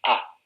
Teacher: para la pronunciación de la A española, la lengua está en una posición neutra, ni adelantada ni atrasada, lo cual lleva a caracterizarla como una vocal central, ¿no? · cuando pronunciamos A, notamos que la lengua está en posición baja.